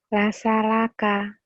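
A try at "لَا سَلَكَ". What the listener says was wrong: Wasalaka. Nggak ada wa. Iya, kedengarannya kayak wa ya, hati-hati tuh. wasalaka, padahal la mungkin maksudnya. Cuman kedengarannya kayak wasalaka.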